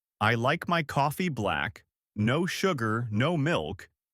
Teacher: you'd try to match that emphasis on coffee and the quick rhythm of no sugar, no milk